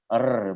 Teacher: Ro itu yang saya dengar dari rekaman-rekaman itu, ro itu jadi ro itu sifatnya adalah takrir. Ro itu mempunyai sifat takrir. Artinya takrir itu bergetar